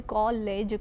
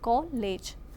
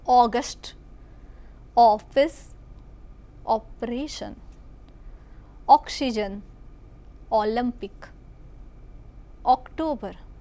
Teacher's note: જો આપણે ઓ સીધો સાધો સવૃત લઈએ તો કોલેજ થાય, આપણે કોલેજ કહીએ છીએ. કોલેજ, કો પહોળો ઉચ્ચાર કરીએ છીએ